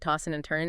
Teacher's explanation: You often drop the G sound, right? Tossing and turning and the D and N might blend. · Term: G dropping